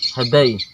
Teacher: Ini ujung lidah ke belakang gigi atas.